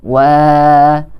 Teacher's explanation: Huruf mat tabi'i yaitu alif yang didahului huruf berharokat fathah, yaitu wa. Wa yang berharokat fathah, kemudian di depannya ada huruf alif. Wa, maka harus dibaca sepanjang 2 harokat.